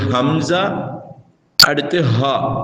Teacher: இந்த இரண்டு எழுத்துக்களும் தொண்டையின் அடிப்பாகத்திலிருந்து வெளியாகும்